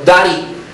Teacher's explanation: fíjate que esto es inglés americano. La D queda intervocálica, se convierte en una leve N